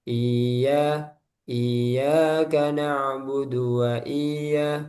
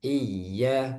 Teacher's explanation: Nah, ini kurang harusnya dikasih nabar. Nabar itu ada hentakan atau naik suaranya